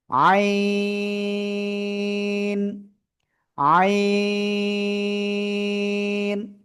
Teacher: গলাটা চেপে চার আলিফ টানে উচ্চারণ করব আমরা।